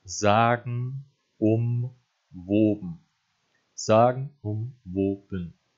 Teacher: Da verschluckt er eben bei sagen und woben die zweite Silbe, nämlich das Gen, dadurch, dass er sagt sagen umwoben, absichtlich, anstatt sagen umwoben, damit es eben insgesamt viersilbig bleibt.